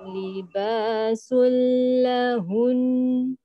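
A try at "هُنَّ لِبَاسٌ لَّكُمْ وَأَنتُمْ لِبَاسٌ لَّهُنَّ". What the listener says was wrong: Sikit lagi dengung tu. Libasul lahun. Sul jangan lama. Libasul lahun. Dua. Dia tetap dua. Dia tetap dua.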